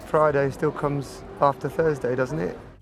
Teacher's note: But again, because we've got this slightly nasal quality to begin with